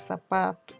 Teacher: quando falamos sapato, o pá é pronunciado com mais força. Então, é uma paroxítona.